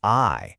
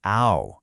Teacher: See how it's just a smooth glide from that first vowel to the second?